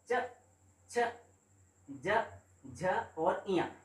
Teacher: च वर्ग से संबंधित जो व्यंजन है वो आते हैं तालव्य से। तालव्य यानी कंठ से थोड़ा सा ऊपर, विंडपाइप से थोड़ा सा ऊपर हम देखते हैं तो यहां पर तालव्य का पोर्शन आता है, है ना।